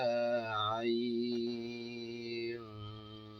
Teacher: Ayn, also you prolong it up to 6.